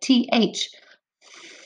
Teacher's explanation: my tongue sticks out a little bit on that th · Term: th sound